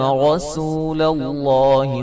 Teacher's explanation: لفظ اللہ کو خوب موٹا ادا کریں گے اس سے پہلے حرف پر زبر ہے